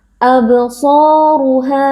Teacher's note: Alif yang sebelumnya berharakat fathah kita baca panjang dua harakat absoru ro juga tebal karena di sini huruf ro berharakat dammah kita angkat pangkal lidah